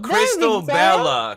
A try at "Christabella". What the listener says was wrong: Not Crystal. It's not Crystal. It's Christabella.